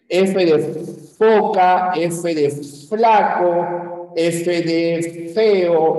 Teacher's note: se denomina labio dental cuando el labio inferior sube hacia los dientes superiores y hay una sola labio dental que vendría ser la e